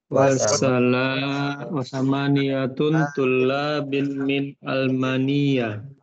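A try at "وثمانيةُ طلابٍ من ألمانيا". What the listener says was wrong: Tidak boleh tanwin ya. Thamaniyatu. Tidak boleh thamaniyatun.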